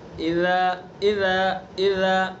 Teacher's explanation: نرمی سے زبان کا کنارہ اور زبان کی نوک ثنا علیہ کا کنارہ، وہاں سے اذا کو ادا کریں گے